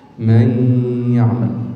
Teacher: يبقى لابد أن يكون هناك عملان، غنة ومخرج، مخرج الياء وغنة النون